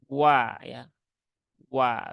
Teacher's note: Waw ini dia hurufnya tipis ya, hurufnya tipis dan dia satu-satunya huruf berharokat fathah yang dimulai pengucapannya dengan memonyongkan bibir